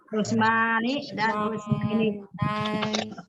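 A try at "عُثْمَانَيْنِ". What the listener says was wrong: Bukan Usmaini. Nunnya jangan hilang. Jadi bukan Usmaini. Usmanaini, ya.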